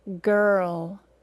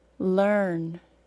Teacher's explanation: word learn learn we hear all our mmm only three sounds the r sound is nearly taking over the vowels in those words it isn't completely taking over the vowel however because it is